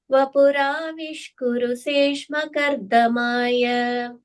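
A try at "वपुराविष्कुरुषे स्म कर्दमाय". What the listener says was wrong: on the last line there, kurushe, there is a sha sound. Sma is the sound.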